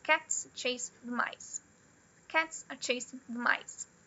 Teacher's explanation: Vocês percebem que o ritmo delas é parecidíssimo? A duração delas é parecida. Por mais que a primeira tenha três palavras e a última tenha uma, duas, três, quatro, cinco, seis, sete, oito palavras.